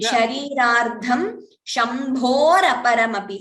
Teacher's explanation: So instead of the Visarga and A, you get Ra. So Visarga goes, A goes, and you get Ra. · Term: Visarga Rephasanthi